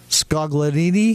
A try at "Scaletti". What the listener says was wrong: Scaletti. The G is silent. Scaletti.